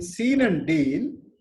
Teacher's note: And here, the point we have to understand is, in seen and deal, we can lengthen the pronunciation of or utterance of the sound E